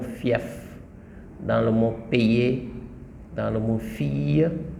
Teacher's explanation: lorsque le I est en contact avec une voyelle dans le mot, le I se transforme en semi-voyelle ou semi-consonne